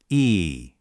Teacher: Feel how high your tongue is? Almost touching the top?